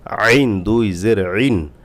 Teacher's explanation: আইন গলা থেকে আনতে হবে